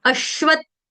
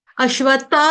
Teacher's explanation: अश्वत आधा त का टच देना है।